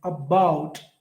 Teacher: In about, A is unstressed, bout is stressed.